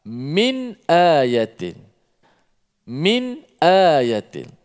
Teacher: Yang mana apabila nun ataupun tanwin bertemu dengan salah satu daripada huruf 6 huruf izhar halqi itu, maka dibaca secara jelaskan nun mati tanpa dipanjangkan gunnah ataupun dengung